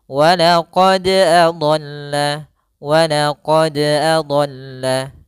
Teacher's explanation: Qalqalah yaitu artinya ittirab, memantul dan bergetar. Maka untuk pantulan dari huruf dal usahakan jangan sampai ada tambahan.